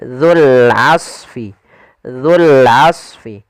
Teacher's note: hati-hati dalam pelafalan huruf dzanya jangan sampai terbaca dengan zai kembali. Kemudian dul di sini ada wau awalnya memang menandakan panjang tapi karena dia bertemu dengan huruf sukun berupa huruf lam maka huruf wnya tidak dianggap panjang sehingga langsung ke huruf lam yang di sini.